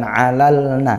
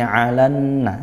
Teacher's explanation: al bertemu nun. Nah, tapi alnya tidak dibaca. Maka ini idgham alan langsung. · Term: idgham syamsiyah